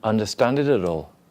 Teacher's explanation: you did three links together, and you made this T a bit like a D, and that sounded good